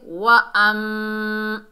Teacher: हमज़ा को मीम से मिलाएंगे। मीम मुशद्दद में एक अलिफ की मिकदार गुन्ना होगा